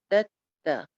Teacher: نرمی کے ساتھ آپ کو پڑھنا ہے، دو دانتوں کی جڑ میں زبان لگا کے، دو دانتوں سے زیادہ میں زبان نہ لگائیے گا.